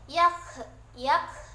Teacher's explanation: Di situ terdapat kaf yang berbaris sukun dan itu terdapat pada sifat syiddah dan hams. Syiddah ditekankan sedikit dan hams dikeluarkan angin sedikit. Jadi yang didahulukan adalah syiddah, ditekan sedikit baru dikeluarkan angin sedikit.